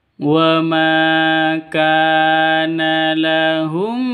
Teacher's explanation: wa ma dibaca panjang di situ karena ada alif, diawali dengan fathah atau alif sebelumnya berharokat fathah. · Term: mad asli